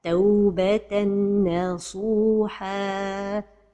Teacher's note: The mistake is to pronounce it without a time for the ghunnah.